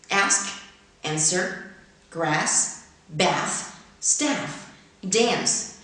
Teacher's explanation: The flat A is the third important feature of General American. Ask, answer, grass, bath, staff, dance are pronounced with a short A of trap, not with the broad A of father in received pronunciation